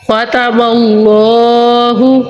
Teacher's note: ختم اللہ، خواہ جو ہے حروف مستعلیہ ہے اور اس میں جلالت اللہ عز و جل والے لام سے پہلے زبر ہے تو ہم ادھر اس میں جلالت اللہ عز و جل والے لام کو موٹا پڑھیں گے